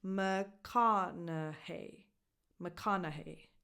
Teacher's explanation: The stresses go on ka and hey at the end